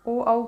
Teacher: ये वृत्तमुखी है क्योंकि ओ औ के उच्चारण में मुंह जो है हमारा गोलाकार हो जाता है, ऐसे गोलाकार होंठ हो जाते हैं, तो ये होगा आपका वृत्तमुखी।